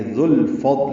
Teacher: ذال کو لام سے ملائیں گے